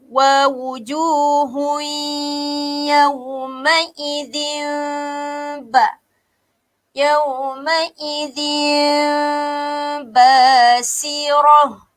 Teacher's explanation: Cara bacaannya seakan-akan menyebut ataupun seakan-akan menyembunyikan huruf mim, okey, dan direnggangkan sedikit. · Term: iklab